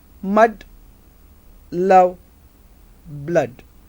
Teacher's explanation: So in the production of this vowel, the center of the tongue is raised, the jaws are wide and lips are neutrally open. It is unrounded sound.